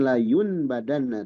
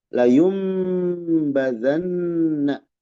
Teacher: Nun bertemu ba gitu. Nun sukun atau tanwin menghadapi ba bunyinya dirubah menjadi mim dan ditahan. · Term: iqlab